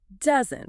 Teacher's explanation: doesn't has the stress on the first syllable.